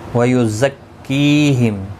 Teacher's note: زا کو سختی کے ساتھ ادا کریں تاکہ یہ حروف صفیریہ میں سے ہے. تشدید والے حرف کو بھی سختی کے ساتھ پڑھیں تاکہ تشدید ظاہر ہو.